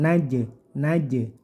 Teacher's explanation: jimnya di sini Qalqalah sugro dipantulkan